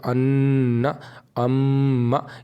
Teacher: ایک غنے کی مقدار ایک الف کے برابر ہے تو ایک الف کے برابر غنہ کو مطلب ناک میں آواز کو تھوڑی دیر چھپا کر کے پڑھنا ہے